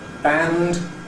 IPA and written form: bænd (Band)